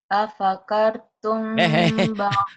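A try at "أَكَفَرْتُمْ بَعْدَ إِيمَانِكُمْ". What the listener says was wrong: Terbalik. Apakah akafar? Apakar. Bacanya lidahnya.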